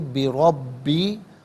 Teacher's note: را پر زبر ہے، را کو پر کر کے پڑھیں گے، با مشدد ہے، اسے جماؤ کے ساتھ پڑھیں گے، اور یا مدہ کے اوپر مد کی علامت ہے، مد منفصل بھی کہتے ہیں، مد جائز بھی کہتے ہیں۔